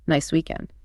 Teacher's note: Rising intonation, where your pitch goes up at the end of the phrase signals openness and invitation.